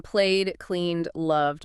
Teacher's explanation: the ed simply adds a D sound directly onto the end, blending in without adding an extra syllable